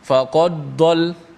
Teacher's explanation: Dia seakan-akan bunyi idgham, bunyi dal tu dimasukkan ke dalam dad.